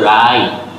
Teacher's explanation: W-টাকে omit করে দিয়ে আমরা বলবো write